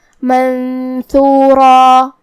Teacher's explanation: ہم را کو اور مد الف کو دونوں کو بھاری آواز میں پڑھیں گے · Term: تفخیم